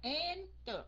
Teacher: Tại vì mình nhấn âm đầu, mình đọc là enter.